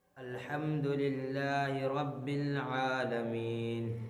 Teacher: لام باریک ہو رہا ہے، اللہ کے لام باریک ہو رہا ہے کیونکہ اللہ کے لام سے پہلے زیر ہے، اس لیے اللہ کے لام کو باریک پڑھیں گے۔ · یا مدہ ہو رہا ہے کیونکہ یا ساکن سے پہلے زیر ہے، اس لیے یا مدہ ہوگی۔ یا مدہ کو ایک الف کے برابر کھینچ کر پڑھیں